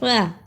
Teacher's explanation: را کو ادا کرنے کا طریقہ، زبان کی نوک کو سامنے اوپر کے دو دانتوں کے کناروں سے ملائیں اور بولیں را